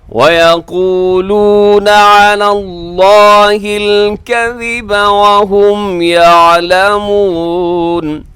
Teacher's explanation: आगे देखिएगा नेक्स्ट, वयक़ूलून अलल्लाहिल कज़िब वहुम यअलमून, अलल्लाहि लफ्ज़ अल्लाह को खींच के लंबा करके और इसको मोटा करके आप अदा कीजिएगा